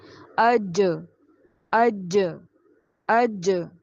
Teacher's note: نیچے ہے جیم، جیم پر ساکن ہے، قلقلہ کیجئے